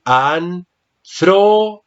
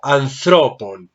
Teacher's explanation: En el nominativo decimos anthropos, pero aquí ya está en genitivo. El acento, observa que está en la segunda sílaba, entonces tengo que decir anthropon.